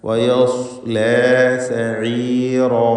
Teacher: വയസ് എന്ന് പറയുമ്പോൾ സ്വാദിന് മാത്രം തഫ്ഖീം കൊടുക്കുക. വയസ്ലോ എന്നായി പോയത് വയസ്ലാ ലാ എന്ന് തർക്കീഖ് ചെയ്യണം.